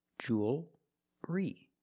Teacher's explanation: It's still a dark L, because you have the L before a consonant.